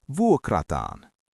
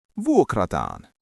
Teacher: we add a long -aan sound